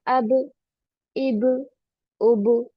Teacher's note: इसमें bouncing sound आता है, यानी कि टकराने जैसा एहसास होता है। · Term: कलकला